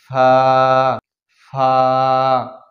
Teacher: নিচের ঠোঁটের পেট সামনের উপরের দুই দাঁতের আগার সঙ্গে লাগিয়ে ফা। 14 নম্বর মাখরাজ নিচের ঠোঁটের পেট সামনের উপরের দুই দাঁতের আগার সঙ্গে লাগিয়ে ফা ফা।